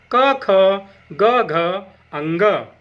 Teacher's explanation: क वर्ग के स्पर्श व्यंजन क, ख, ग, घ, अंग। इनका उच्चारण स्थान कंठ होता है।